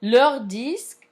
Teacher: Leur disque is in plural, therefore it's going to be with S at the end. But we can't hear leur with the S at the end of leur because disque starts with consonants, so there is no liaison to mark that